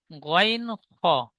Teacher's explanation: 3 number মাখরাজ, হালাক বা কণ্ঠনালীর শেষ ভাগ হতে উচ্চারিত হয়